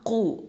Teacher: இது வந்து heavy letter தஃப்ஹீமாக உச்சரிக்கணும்